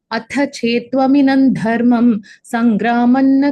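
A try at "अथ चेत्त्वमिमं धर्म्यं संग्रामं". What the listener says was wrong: Atha chetvam dharmyam, not dharmam. अथ चेत्त्वमिमं धर्म्यम्.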